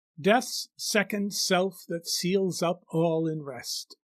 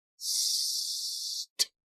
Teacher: But notice how many times the letter S is used in this line. That sibilant sound keeps going through the line until the T in the word rest puts an end to it.